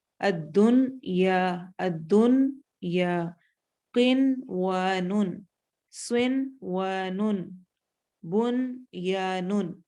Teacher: لیکن چونکہ یہ ایک ہی ورڈ کے اندر نون ساکن اور یہ حروف ہیں، اس لیے ہم یہاں پر ادغام غنہ کے ساتھ نہیں کریں گے، بغیر غنہ کے بھی ادغام نہیں ہو رہا، یہاں پر ہم اظہار مطلق یعنی نون کو واضح کلیئر کر کے پڑھیں گے۔ یہ 4 ہی حروف ہیں، ان کو پڑھتے ہوئے ہم نے واضح کرنا ہے، الدن یا قن و نن، سن و نن، بن یا نن۔